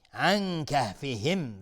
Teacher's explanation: نون ساکن بهش کاف اخفای حقیقی